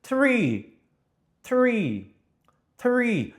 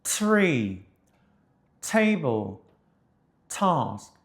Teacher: 티읕과 치읕의 사이 소리처럼 느껴지는 건 그 혓바닥이 그 윗니빨 뒤쪽을 건드려 줘야 하기 때문에. 이거를 그대로 똑같이 가서 성대만 울리게 하면 이게 D 발음이거든요. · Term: alveolar ridge